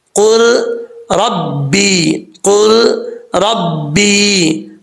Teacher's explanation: یہاں پہ قاف کو را سے ملائیں گے, لام نہیں پڑھا جائے گا. قل ربی قل ربی, را کے اوپر زبر ہے, را پر پڑھا جائے گا.